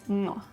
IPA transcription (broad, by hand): ŋɔ